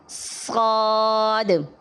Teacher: اگر ہم پڑھیں گے صاد تو درست نہیں ہے۔ ایک تو ہم نے اس میں آواز کو باریک کر دیا، سین کی طرح بنا دیا، اور آخر میں آواز کو باؤنس بھی نہیں کیا۔